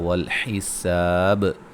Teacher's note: وقفاً با پہ قلقلہ کو خوب واضح کریں گے